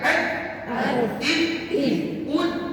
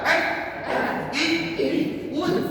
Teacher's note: Sekarang ni kata ulama, dari segi makhraj, tempat keluar bunyi tak dengan dal mesti sama. Dia guna hujung lidah tahan pada gigi kacip.